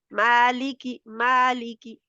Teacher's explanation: मा को लंबा करेंगे ली की जो है वह छोटा रहेगा ली की और बारीक भी रहेंगे